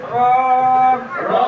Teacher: নুন। 10 নম্বর মাখরাজ 10 নম্বর মাখরাজ জিহ্বার আগার উল্টা পিঠ জিহ্বার আগার উল্টা পিঠ তার বরাবর উপরে তালুর সঙ্গে লাগিয়ে তার বরাবর উপরে তালুর সঙ্গে লাগিয়ে র র 10 নম্বর মাখরাজ